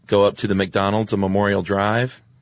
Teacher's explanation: when giving directions, uh, a lot of people use uptalk because it's you're sort of asking a question